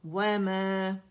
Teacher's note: مد اصلی 2 کاؤنٹ کے لیے آواز اوپر جائے گی، واو کے لیے گول ہو جائیں گے لپس.